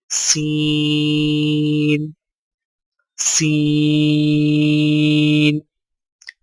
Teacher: سین کی ادائیگی میں زبان کی نوک کو سامنے والے نیچے کے 2 دانتوں کے کناروں سے مضبوطی سے لگا کر باریک اور سیٹی جیسی آواز میں پڑھیں